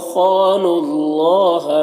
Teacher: اللہ کے لام سے پہلے نون کے اوپر پیش ہے تو اللہ کے لام کو پر پڑھیں گے